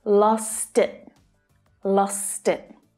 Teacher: notice how the word it is pulled into the word before it because it ends with a consonant.